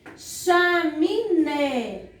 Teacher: a palavra chaminé, a sílaba tônica, a sílaba forte, encontra-se na última sílaba. Última sílaba.